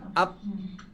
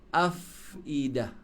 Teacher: Kalau dia rakhawah, cuba pergi keluar. Kalau fa, dia rakhawah kan? Dan tu kalau nafas dia hams. Sebab tu kena sebut huruf fa, af.